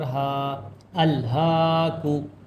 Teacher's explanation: ہا کے اوپر کھڑا زبر ہے اور یہ بھی ایک الف کے برابر کھینچا جاتا ہے